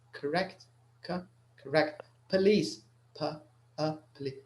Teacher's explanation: حاولوا تقاوموا الرغبة في في نطق حرف الأو انطقاء أقرب للأي أكثر منها أو، يعني ما هيش correct يعني الفم ما يدورش شوار، يعني your lips don't make a circle, they stay open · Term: schwa sound